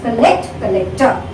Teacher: the stress is on the second syllable, in both the words